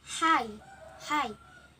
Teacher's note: h is a glottal. Example hi, and the manner is voiceless.